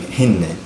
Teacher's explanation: the damma turns more into a kasra, and also the M turns into an N